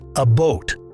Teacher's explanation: Canadian raising, a diphthong shift where the oo sound gets raised slightly